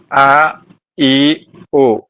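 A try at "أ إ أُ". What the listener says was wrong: കുറച്ചും കൂടി ഒന്ന് ഒരു പിന്നെ കുറച്ചും കൂടി ഇറങ്ങാണ്ട്, ഐനൊന്നും കുറച്ചും കൂടി താവാണ്ട്. അ ഇ ഉ. അ ഇ ഉ. അ ഇ ഉ.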